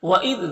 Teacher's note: وَإِذْ ذال کو باریک پڑھیں گے